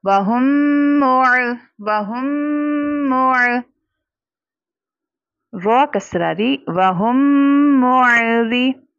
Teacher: रॉ के नीचे चूंकि ज़ेर है, कसरा है, तो रॉ को बारीक पढ़ा जाएगा।